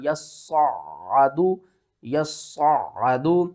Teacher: یا کو صاد کے ساتھ ملائیں گے، صاد کو موٹا کر کے بھی پڑھیں گے، سختی کے ساتھ بھی پڑھیں گے، پھر اس صاد کو عین کے ساتھ ملائیں گے اور عین کے اوپر بھی ہم نے سختی کرنی ہے۔